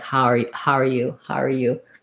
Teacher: And I think what we do is we don't diphthongize the how anymore. It comes more like how are you?